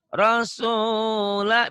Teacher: Ini penekanannya 2 ya. Tekan di su sama la.